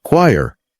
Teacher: it's just 1 syllable, choir, like wire with a K in front.